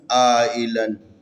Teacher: الف کے اوپر مد ہے، بڑی مد کی علامت ہے، اس کو 4 سے 5 الف کے برابر کھینچنا ہے